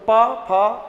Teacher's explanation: होठों का प्रयोग करोगे। लेकिन फ बोलने के लिए आपको दांत और ओष्ठ दोनों की आवश्यकता पड़ेगी। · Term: दंतोष्